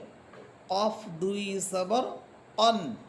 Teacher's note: কফ হরফের মাখরাজ পড়েছিলাম জিহ্বার গোড়া তার বরাবর উপরে তালুর সাথে লাগবে